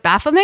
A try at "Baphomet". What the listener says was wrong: Satan was not pretentious. He would not have had a silent T.